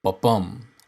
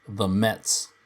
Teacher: Second, let's look at something called iambic pentameter. An iamb is a unit of rhythm consisting of one unstressed syllable followed by a stressed syllable, ba-bum, like the Mets.